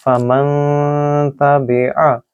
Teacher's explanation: اگر آپ اس کو فمن تبع بولیں گے تو وہ غلط ہوگا، کیونکہ فمن میں غنہ نہیں ہوتا. فمن جب آپ اس کو ناک سے ادا کریں گے، اس کو ناک کے اندر کھینچیں گے کہ 2 سیکنڈز کے لیے، تو وہ صحیح طریقے سے غنہ ہوتا ہے